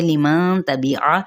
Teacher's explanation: आइन को वस्ते हलक से अदा करेंगे